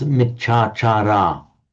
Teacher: the final a of the first word and the initial ah of the second one would merge into one long ah